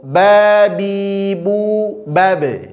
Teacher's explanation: pantulkan ba sukun qalqalahnya cukup di bibir saja